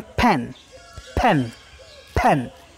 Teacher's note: वो पेन नहीं होता, प नहीं होता, प एस्पिरेट होकर के फ बन जाता है